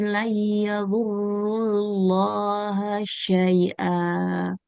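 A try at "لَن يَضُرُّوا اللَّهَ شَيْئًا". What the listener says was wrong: Lan huruf dotnya jangan kayak ke zo ya. yadurrullaha syai'a. ضيض لن يضروا syai'a.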